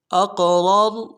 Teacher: را کو موٹا ادا کریں گے، اگلے را کے ساتھ ملانا ہے، اس کو موٹا کریں گے